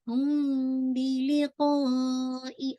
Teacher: لام کی کسرہ شارپ بالکل باریک، اینڈ قاف آپ نے ہیوی پڑھنا ہے